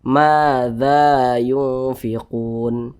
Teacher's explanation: cara membacanya itu dengan cara disamarkan kemudian juga didengungkan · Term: ikhfa Hakiki